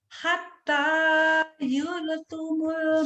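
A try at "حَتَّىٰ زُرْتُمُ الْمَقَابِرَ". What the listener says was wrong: Zur, bukan yur. Zur. Hatta zur. Hatta zurtumul maqabir. Hatta zurtumul maqabir.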